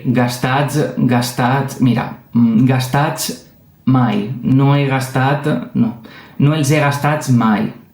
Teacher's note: esta S és sonora, però és sonora quan després de d'eixa S tenim una vocal, qualsevol vocal, però també una B, una D, una Z, una F, una M, una V